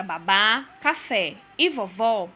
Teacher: primeiras palavras são acentuadas porque se classificam em oxítonas ou seja na palavra babá café e vovó a última sílaba da palavra é a sílaba tônica e elas são terminadas em a E pior as outras não